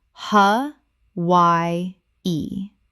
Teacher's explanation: Three syllables with the W making a Y sound.